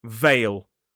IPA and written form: veɪl (veil)